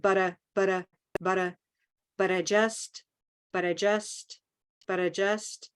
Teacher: notice I don't even say I it becomes kind of but a butter but I just but